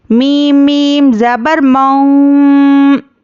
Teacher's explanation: तो पहले इख्फा करना है, थोड़ा होंठ खुले रखना है और फिर होंठ बंद करके गुन्ना करना है।